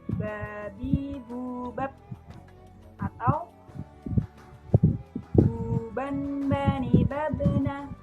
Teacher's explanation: Cara melafalkannya dengan merapatkan dua bibir kita. Tidak jauh berbeda seperti kita melafalkan huruf B dalam huruf Latin. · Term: huruf Ba